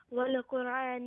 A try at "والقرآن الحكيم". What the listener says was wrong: No. You're saying wala qura, wala. No. There is no qalqala on the lam. والقرآن الحكيم.